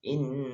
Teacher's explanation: Ya, tasdid ini berarti dibacanya harus double. Tidak boleh membaca inna atau ina, tapi in mendengung.